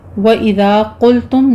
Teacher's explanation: ذال کو نرمی سے پڑھتے ہوئے الف مدہ ادا کریں گے, قوف پر پڑھنا ہے, میم ساکن کا قاعدہ اظہار شفی ہے.